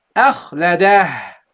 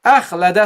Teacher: You see the ha from the lower part of the throat.